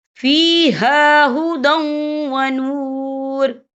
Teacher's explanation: وقف کی صورت میں را ساکن ہو جائے گا۔